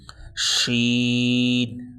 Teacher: جب شین ادا کریں گے منہ میں آواز پھیل جائے گی